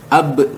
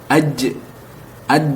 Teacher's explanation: kalau ba, jim dan dal itu mantulnya ke huruf e. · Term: qalqalah